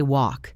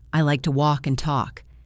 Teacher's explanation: And let us not forget the silent L in walk and talk. We do not say wall K.